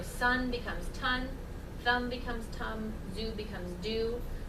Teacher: the place of articulation stays the same it's the manner that changes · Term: stopping